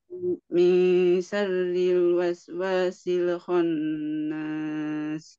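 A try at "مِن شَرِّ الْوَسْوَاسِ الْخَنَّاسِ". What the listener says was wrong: Baik, nanti silakan untuk lam sukunnya dilatih jangan sampai dia memantul.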